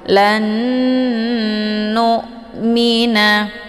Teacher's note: Jadi cara bacanya itu didengungkan, nunnya langsung dileburkan ke dalam nun yang kedua dengan terbentuk suara yang tertahan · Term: idgham bi ghunnah